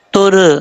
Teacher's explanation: را ساکن سے پہلے پیش ہوگا تو را کو پر پڑھا جائے گا